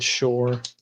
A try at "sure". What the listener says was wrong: Why do you say the U like an O? You sound like you're saying shore, like beach shore.